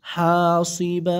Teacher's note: এক জবর ধরে এক আলিফ টেনে দিবেন যদি অকফ করেন মধ্যে আওয়াজ হবে ঠিক আছে হাসিবা ফা জবর